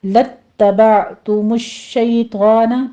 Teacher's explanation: گے، لَاتَّبَعْتُمُ الشَّيْطَانَ اس کو لَأَت نہیں کہنا ہے، یہ ہے لام کو تا کے ساتھ اٹیچ کرنا ہے